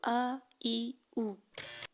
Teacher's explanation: یہ منہ کے اندرونی حصے سے ادا ہو رہا ہے، منہ کے یعنی زبان کے کسی حصے سے نہیں لگ رہا۔ الف کو ادا کرتے ہوئے زبان نہ اوپر والے سخت تالو کے ساتھ لگے گی اور نہ نرم تالو کے ساتھ لگے گی۔ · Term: الف کا مخرج